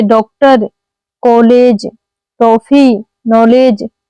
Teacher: यह ध्वनि आ तथा ओ के बीच की है। इसे बोलते समय मुंह आधा गोल खुलता है। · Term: आगत स्वर